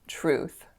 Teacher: ooh it's a moving sound so not an O but really an ooh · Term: ooh sound